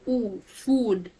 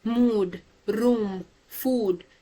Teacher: it's a high back rounded sound again, so your lips automatically gets rounded